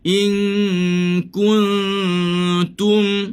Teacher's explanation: Ku, kita muncung. Bila masuk mati, kita balik, relax balik. Bila letak, muncung balik.